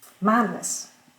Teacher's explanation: l'accent reste sur mad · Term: suffixe neutre